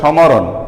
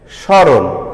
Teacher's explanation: যে শব্দের প্রথমে মফলা থাকলে তার উচ্চারণ হবে না এবং মফলাযুক্ত ব্যঞ্জনের স্বরধ্বনিটির সানুনাসিক হবে।